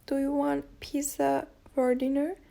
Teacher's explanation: Here, the speaker emphasizes pizza, suggesting a question about the choice of food or dinner, pizza or another option.